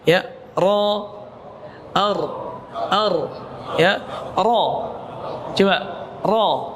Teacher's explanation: getarannya jangan banyak-banyak, jangan ra kayak anak yang baru belajar R